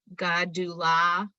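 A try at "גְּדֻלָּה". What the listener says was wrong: Not God. Not God. I'm being very fussy. It's not God. It's not Gadula.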